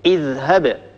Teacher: الحرف الأول من هذا الفعل هو همزة الوصل، الحرف الثاني هو الذال الساكنة التي من أجلها أتينا بهمزة الوصل، الحرف الثالث هو الهاء. ما حركة الهاء؟ حركتها فتحة مباشرة، أكسر همزة الوصل عند البدء.